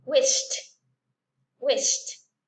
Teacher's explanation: sino es wish y la T junta. Wished, wished.